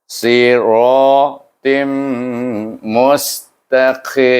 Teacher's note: tanwin bertemu dengan huruf mim dibaca dengan idgham ma'al gunnah